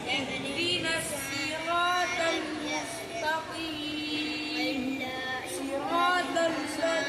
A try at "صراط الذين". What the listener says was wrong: طا نہیں نکال پا رہے ہیں آپ۔